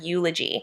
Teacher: eulogy starts with an e but it kind of has that y oo sound with eulogy